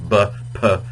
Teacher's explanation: they're both made with the with the lips they're called labial consonants B is voiced b p is unvoiced p uh so they're